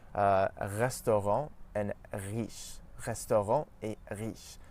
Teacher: in French we pronounce it at the back of our mouth, close to the uvula. So when we push our tongue back a bit, it forces our tongue to pronounce the R sound further back in the mouth. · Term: French R sound